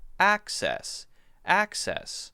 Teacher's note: The basic difference is the A and the E sound. When we say the A sound, it's ah. The mouth is open wider.